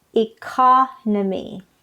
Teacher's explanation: the noun part is economy the stress is on the second syllable economy all right next word other people pronounce this discrete or